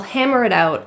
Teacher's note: pronounced as a flap T or a quick D sound because it's surrounded by vowels